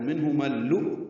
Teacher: وقف کریں گے تو منہما اللؤلؤ حمزہ ساکن دونوں جھٹکے سے پڑھے جائیں گے، لیکن ہم نے آگے اکٹھا پڑھنا ہے تو منہما اللؤ یہ حمزہ ساکن جھٹکے سے ادا ہوگا، ادغام شمسی ہوگا میم کو جب لام سے ملانا ہے، بیچ میں الف لام نہیں پڑھنا، لام مشدد پڑھنا ہے